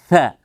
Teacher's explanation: Dan dia sifatnya adalah hamas. Ada udaranya juga sedikit. Mengalir nafas. Tetap keluar udara sedikit. Suaranya mengalir, ar-rakhawah. · Tampakkan sedikit di sela-sela gigi ketika diucapkan. Ujung lidah di antara dua ujung gigi, seri atas dan bawah, dan keluarkan sedikit lidahnya. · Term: huruf tha